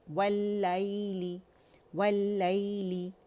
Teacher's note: और आप देखें या साकिन है, उससे पहले फतहा आ रही है तो क्या बना, ये यालीन बना। तो इसको लीन की तरह अदा करेंगे नरमी के साथ · लाम कसरा ली, आवाज़ नीचे जाएगी